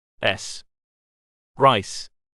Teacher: Voiceless, tip of tongue behind top teeth. Friction.